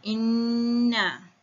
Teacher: cara bacaannya adalah dengan menahan atau menekan sedikit suara pada nun yang bertasydid dengan dengung. Sekadar 2 harakat dalam keadaan mulut yang terbuka. · nun yang mati tu kita tekan lama sedikit. Kita dengungkan dia sedikit dengan kadar 2 harakat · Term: nun syaddah